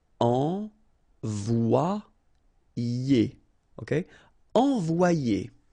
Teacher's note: But then if you've got one vowel before, one vowel after, then it will change like if it would be E here, one, and then a second E here. So you get the sound O-I, so it's wa, and then you get the sound I and ER, it's ye.